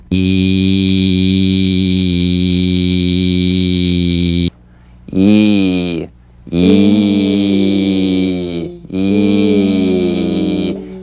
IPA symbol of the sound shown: i: